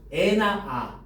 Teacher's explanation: 입을 가장 크게 벌리고 혀의 위치를 가장 낮추어서 발음하는 겁니다